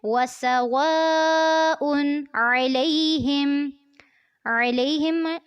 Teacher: उनमें हमज़ा है और फ़ौरन उसके बाद आइन आता है, तो दोनों हुरूफ को आपने वाज़े करके पढ़ना है। वसवाउन अलैहिम, अलैहिम आइन को वाज़े करना है और लई पे नरमी से पढ़ना है।